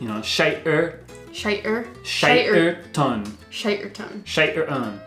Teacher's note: I'm gonna say the second T is a glottal T